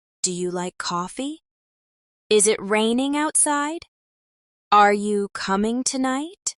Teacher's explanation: Let's also work on improving intonation for yes/no questions. In English, these usually rise at the end.